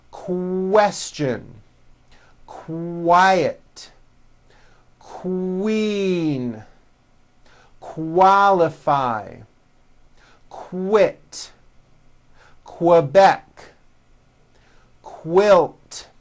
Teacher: Q sounds are made with the K sound, k, k, and the W sound, w, put together